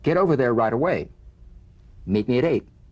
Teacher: the final t when it's followed by a word beginning with a vowel again it becomes in effect a medial t there's a vowel on both sides of it so it could